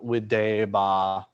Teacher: So we'll get a long vowel before the ba that is added to the present stem. That's how we get the imperfect stem.